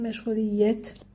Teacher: Vurğu 4-cü heca üzərindədir.